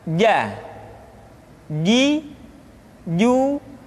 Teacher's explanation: dikeluarkan dengan menyentuhkan tengah-tengah lidah dengan langit-langit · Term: huruf j